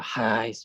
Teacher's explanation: when you pronounce the highs, right, there's turbulent airflow at your throat. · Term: fricatives